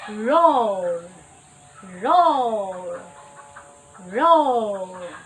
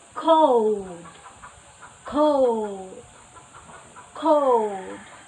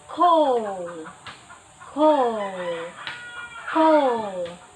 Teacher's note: So to produce this sound, we should first raise the back of our tongue midway. Then our lips is rounded higher and farther back and protruded at the end. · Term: diphthong O